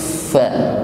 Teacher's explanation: huruf fa ini memiliki sifat hamas ya, ada nafas yang mengalir ketika mengucapkannya. Sebelum fa terucapkan maka ada nafas yang mengalir.